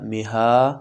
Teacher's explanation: مها ولاړ زبر دی د یو الف په مقدار راښودلی کیږي.